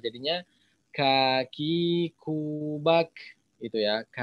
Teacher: sifat huruf yang paling ciri khas adalah mengalirnya aliran udara di huruf Kaf itu ya